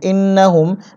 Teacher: নুনে তাসদিদ আছে, ওয়াজিব গুন্না, গুন্না করতে হবে।